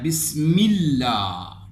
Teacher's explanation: جیسے یہ میم ہے، میم کو اگر آپ دیکھیں تو اس کے نیچے زیر ہے، اس لام کو ہم باریک پڑھیں گے۔ لفظ اللہ کے اس لام کو ہم باریک پڑھیں گے، یعنی پر نہیں پڑھیں گے جس سے منہ بھر کے جس طرح ہم پڑھتے ہیں۔